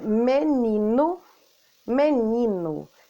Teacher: Então, o ni é dito com mais força. Menino. Então, o ni aparece mais. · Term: sílaba tônica